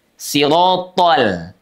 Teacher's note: Tol, tol, L-nya tidak ikut menebal karena huruf lam itu dia infitah, ya tidak lengket, juga tidak isti'ala, tapi istifal, pangkal lidahnya turun. Sirotol. L-nya udah kembali lagi normal tuh.